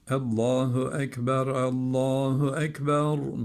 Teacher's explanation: Allah lafzından önceki harfin harekesi Üstün Dolayısıyla bu lam kalın bağlanacak ve kalın okunacaktır